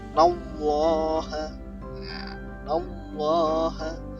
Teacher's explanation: ini didahului harokat fathah, maka dibaca tebal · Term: tafkhim